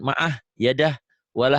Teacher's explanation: Tapi kalau dihentikan ma'ah, yadah, walah jadi pendek kalau dihentikan ya.